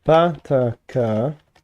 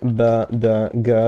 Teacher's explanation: there is a chain shift where pa ta ka become ba da ga via lenition just unconditional. And then at a k because they're ejectives, they're much harsher they can remain pa ta ka.